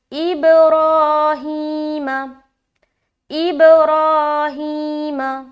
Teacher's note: میم کو ہم بالکل جلد چھوڑ رہے ہیں, کیوں؟ کیونکہ اس کے اوپر صرف اور صرف زبر ہے اور زبر کو بالکل بھی کھینچا نہیں جاتا, اس کو ہم جلد ادا کریں گے.